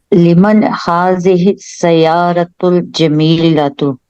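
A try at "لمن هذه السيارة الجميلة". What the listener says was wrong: माशाल्लाह, जय्यद जिद्दन, अहसनती. माशाल्लाह, आपने तो एक्सीलेंट, माशाल्लाह, वेरी गुड.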